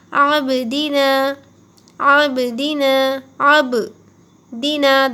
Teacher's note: دال کو نیچے مت کھینچیے، جلد ادا کرے کیونکہ زیر کی حرکت ہے، دی، دال زیر دی، جلد پڑھیے، عابدی، نا کو کھینچیے کیونکہ الف مدہ ہوگا۔